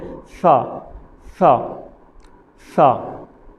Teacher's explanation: زبان کی نوک سامنے والے دانتوں کی نوک سے لگتی ہے